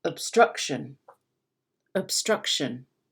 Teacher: Can you hear how I don't even really pronounce the O? Instead of saying ob, I say ob. · And it's lower. Ob and shun are lower than struck, which is higher.